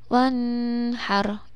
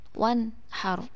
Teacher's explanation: Wanhar itu harus dibaca idhar, dibaca jelas, tidak boleh didengungkan sama sekali.